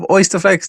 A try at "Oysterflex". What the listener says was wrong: It's called Oysterflex, not Oysterfex.